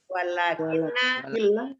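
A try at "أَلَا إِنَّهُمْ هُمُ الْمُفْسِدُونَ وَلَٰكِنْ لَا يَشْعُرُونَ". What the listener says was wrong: walakil Bu, ini bukan lakinna ini, walakil la yas'urun.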